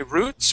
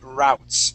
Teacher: you can focus more on that oo sound, or you can focus on the ow